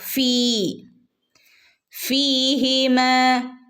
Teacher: ഫീഹിമ ഫീ ഫഹ് കഴിഞ്ഞിട്ട് ഫഹ് കഴിഞ്ഞിട്ട് യ ഉണ്ട് അല്ലെ യ ഉണ്ട് ഫ കഴിഞ്ഞിട്ട് യ മദ് ഉണ്ട് ഇവിടെ നമ്മൾ രണ്ടനക്കം നീട്ടി കൊടുക്കുക